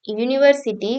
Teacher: starting with a Y sound, not a vowel sound